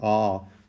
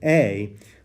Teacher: this is a lengthening of the vowel from the short A sound, ah, to the long A sound, a, and the lengthening happens because that epsilon is added.